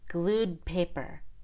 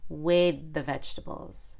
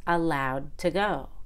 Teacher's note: Now, when the original verb ends in a vowel, the ED will not create an extra syllable. It'll be part of the same syllable, but we can still make a held D before the consonant in the next word.